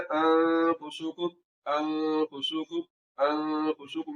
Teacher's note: ये गुन्ना ज़मानी है, यानी कि इसकी मिकदार एक अलिफ के बराबर है और ये कसदन लंबा किया जा रहा है।